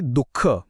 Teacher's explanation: आहे विसर्ग हा एक कोणता वर्ण आहे याच उत्तर आहे कंठ्य विसर्गाचा उच्चार म्हणजे तो ह सारखा जो ध्वनी आहे तो थेट कंठातून येतो जसे की दुःख म्हणताना म्हणून विसर्गाचा उच्चार स्थान आहे कंठ अगदी